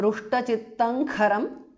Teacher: of sandhi रुष्टचित्तम is a compound word kharam so रुष्टचित्तं kharam because of sandhi anuswara changes to ng there